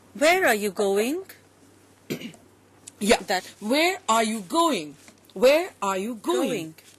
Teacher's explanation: Notice, where are you going? It's always rising.